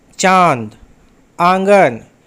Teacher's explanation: अनुनासिक, इसका उच्चारण नाक और गले दोनों से होता है। जैसे चांद, आंगन, इसका चिन्ह चांद में बिंदा होता है।